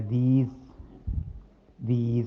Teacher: इसको एस को आपने जेड की तरह पढ़ना है, जे जा की सी आवाज़ पैदा करनी है